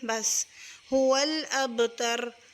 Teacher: هو الأبتر اور لام کو پر نہیں کرنا، لام کو باریک پڑھنا ہے